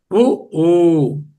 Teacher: ఊ ఊ చూడండి, ఊ అన్నప్పుడు ఎలా పెట్టాను పెదాలు రౌండ్గా వచ్చాయి. ఊ ఊ అంటే పెదవులకు సంబంధించినవి ఓష్ట్యములు సవర్ణం.